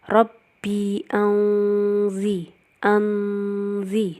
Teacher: nun sukun bertemu zain, ikhfa hakiki, dibaca samar dan dengung